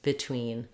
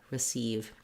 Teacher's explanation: The longer duration clear vowel is in the second syllable in these words · Lastly, another thing that I often point out in my videos, because it is a common error pattern, is that when we have the E in a prefix, like RE at the start of the word or BE at the start of the word, in these cases, it doesn't say the tense E sound, it says the I sound. So not between, but rather between, and not receive, but rather receive.